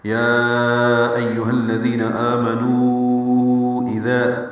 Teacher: آمنو میں آ پہ مد بدل ہے، امنو سے آمنو بنایا گیا ہے، نو واو مدہ ہے، اس کے بعد حمزہ دوسرے کلمے میں ہے، مد منفصل ہے، ہم اس کو 4 حرکات لمبا کرتے ہیں، تو یوں یا کو بھی اور نو کو بھی، یا ایہا الذین آمنوا اذا، 4 حرکات لمبا کرنے ہیں دونوں مد منفصل کو۔